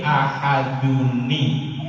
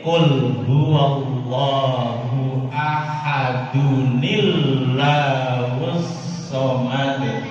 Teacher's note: Yang asalnya ujungnya n, nun sukun, ketika bertemu dengan hamzah wasol maka diberilah baris dia i